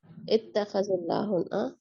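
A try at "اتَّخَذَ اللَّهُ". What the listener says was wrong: آپ نے اتخذل کا نا زیر سے لگا کے پڑھیے.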